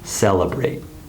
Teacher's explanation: the second e is unstressed but it still has a short sound it sounds like uh celebrate but chinese speakers often skip this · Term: unstressed syllables